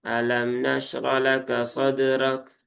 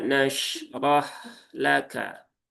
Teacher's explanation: Dan ingat di sini ada sifat rokhawah. Hak itu punya sifat rokhawah. Jadi pastikan juga rokhawahnya tertunaikan.